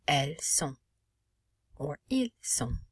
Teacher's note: But also notice how we cannot pronounce the final T, and the N does not have an E following it. So the N is not pronounced, and O is nasalized.